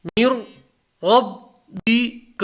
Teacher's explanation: میر کو سیدھا را سے ملیں گے، نون نہیں پڑھیں گے کیونکہ نون کا را میں ادغام ہو جائے گا، ادغام تام۔